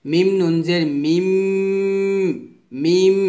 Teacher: পরে বাও আসলে কি করতে হবে এই নুনটাকে মিম পড়তে হবে অর্থাৎ নুন সাকিনটাকে মিম সাকিন পড়তে হবে এভাবে মিম নুন জের মিম মিম এভাবে পড়তে হবে কারণ ইকলাব